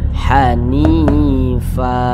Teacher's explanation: ha Alif kecilnya di bawahnya maka kedua-duanya ini dibaca panjang namanya Mad Thobi'i panjangnya dua harakat atau kira-kira dua ketukan